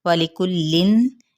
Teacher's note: واو ہونٹوں کی ناتمام گلائی کے ساتھ۔ وَلِكُلٍّ، یہاں پہ کاف کی پیش کو لام کے ساتھ ملائیں گے اور جہاں پہ احفاء حقیقی ہوگا۔